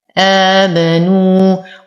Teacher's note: واو ساكنة ما قبلها مضموم فهو من الطبيعي حركتين